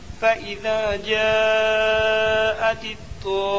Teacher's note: مد لازم کو 4 الف 5 الف کے برابر کھینچ کر پڑھیں۔ میم مشدد میں 1 الف کے برابر گننا ہوگا